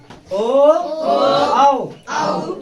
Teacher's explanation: कंठ और ओष्ठ की सहायता से बोला